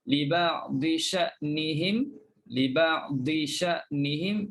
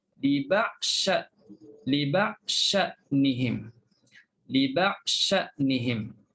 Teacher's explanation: terus masukkan dad dalam shin, maka jangan sebut dad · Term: idgham